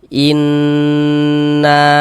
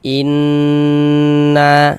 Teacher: Jadi di bagian inn-nya itu suaranya itu kita tahan, kita panjangkan sejenak. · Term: dighunahkan